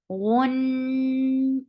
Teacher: Noon will get sifa off. Gunna, and this gunna is akmal. So keep the sound in your nose for a longer time. Gun, and kasra is very short.